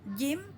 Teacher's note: pastikan tidak ada desis ya jelas tengah lidah dengan langit-langit